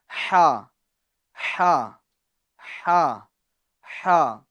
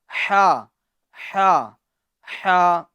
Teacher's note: یہ جو حرف ہے ہا، یہ ہمیں درمیان حلق سے ادا کرنا ہے